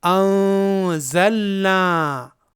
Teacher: یہاں یہ نون ساکن ہے اور اس کے بعد زا حرف ہے جو حروف اخفا میں سے ہے، اس لیے یہاں اس نون کا اخفا ہوگا